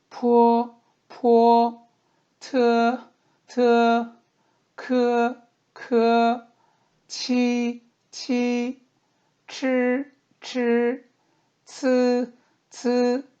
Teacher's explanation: 발음을 할 때 숨을 터트린다 해서 유기음이라고 합니다